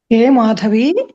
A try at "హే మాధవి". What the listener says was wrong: ఈ దీర్ఘం ఉండదు. హే మాధవి.